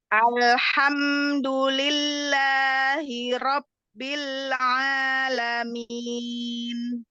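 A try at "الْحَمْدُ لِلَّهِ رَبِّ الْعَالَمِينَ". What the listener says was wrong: Mau monyong dhammah dan alhamdulillah. Jadi setiap harokat diselesaikan. Jangan alhamdulillah, dulillah. Berarti dunya belum selesai ya. Alhamdulillah. Berarti alhamdulillahi rabbil alamin.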